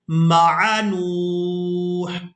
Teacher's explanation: اب یہاں پر آپ لوگ علامات وقف دیکھ رہے ہیں، وقف کریں گے تو وقف کی صورت میں ہم نے ہا کو ساکن کر دینا ہے۔ اب نون کو واو ساکن اور ہا ساکن کے ساتھ ملا کر ادا کریں گے